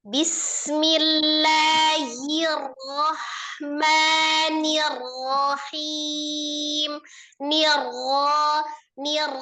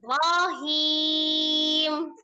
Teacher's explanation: Kemudian ro-nya sifatnya apa? Tawassut. Bukan naber. Tawassut. Mengalir sebagian.